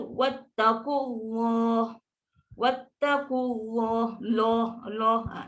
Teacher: Dia punya tebal tu sebabkan lafaz jalalah tu. Sebab bila dia sebelum tu bagi depan atau bagi atas, automatik Allah tu akan jadi tebal. Dan bila tebal dia bunyi lo. Bukan tebal dia bunyi la juga.